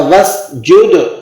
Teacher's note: دال پہ قلقلہ ہوگا، سین کو آپ نے سیٹی کسی آواز سے نکالنا ہے